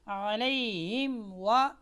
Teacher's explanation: یہاں پر غنہ نہیں ہے، یہاں پر دیر نہیں لگے گی، یہاں پر آپ نے میم کو واضح کر کے پڑھنا ہے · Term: میم واضح